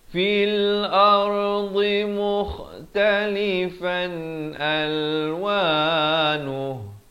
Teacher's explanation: Fil ardi makhrajnya di tepi lidah